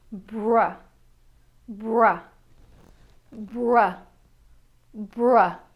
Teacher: Let's look at the BR "bruh" consonant blend. In this case that tongue doesn't move so the lips do all the work - bra bra bra bra. · The B rolls right into the R making the buh and the ruh into bra. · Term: BR consonant blend